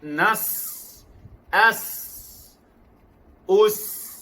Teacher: Senyum pada huruf sin. Sin ada 3 sifat. Yang pertama, hamas, melepaskan nafas atau nafas terlepas. Yang kedua, rakhawah, suara yang mengalir. Yang ketiga, sofir, desiran atau siulan.